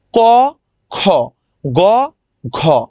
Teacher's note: ক এবং গ তে অল্প থাকে। অল্প প্রাণ। খ এবং ঘতে কি থাকে? মহা থাকে। অনেক বেশি বাতাস থাকে। এজন্য মহাপ্রাণ।